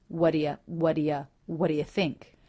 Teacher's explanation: you the vowel is reduced to thewwa what what Whata so those three unaccented words are all linked together low and Pitch very smooth · the word think is stressed none of the sounds reduce here